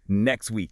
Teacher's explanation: The letter x is actually two consonant sounds, a k and an s, right? >> So the word next ends in k st.